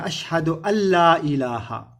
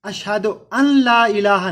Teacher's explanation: لم یلد ولم یولد، لم نہیں، یلد اس کی اولاد، بیٹا یا بیٹی، ولم اور نہ ہی، یولد وہ کسی کی اولاد ہے، ولم یکن لہ کفوا احد، ولم اور نہیں، یکن کوئی، یا کلہ، یہ جو نون ہے ادھر یہ پڑھنے میں نہیں آئے گا۔ نون ساکن کے بعد اگر لام پر تشدید آ جائے تو پھر یہ نون پڑھا نہیں جاتا